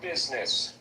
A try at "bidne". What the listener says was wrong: No, bidne, where you put a D in it.